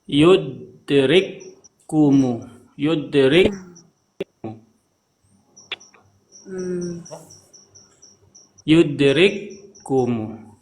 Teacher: Kaf kan yang satunya sukun yang satunya berhakat Dah betul nah dua Kaf ini digabungkan jadi satu · Kapnya jadi satu, Rikum. kapnya dijadikan satu, kemudian dikasih tasydid. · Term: idgham mutamasilain, idgham